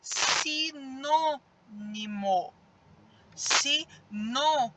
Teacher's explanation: o nó sai com mais intensidade